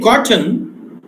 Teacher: In cotton, this n is a syllabic consonant because it takes the position of a vowel.